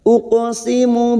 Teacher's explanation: Fala ada mat lagi di sini yang bertemu dengan hamzah di lain kalimat, mat jaiz munfasil, 5 harokat kita panjangkan. Fala uqo qaf sukun yang mati asli di tengah kalimat kita pantulkan, namanya qalqalah sugro